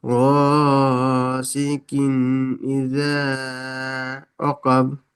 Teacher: তানবিনের আওয়াজকে জাহির করে পড়তে হবে বিনা গুন্নায় জাহির করে পড়তে হবে। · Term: ইজহার